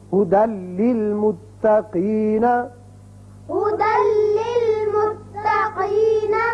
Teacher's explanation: تنوین کی مثال لام کی هُدًى لِّلْمُتَّقِينَ، هدى للمتقين. یعنی دال کی ایک زبر لام سے ملے گی اور بغیر غننے کے پڑھا جائے گا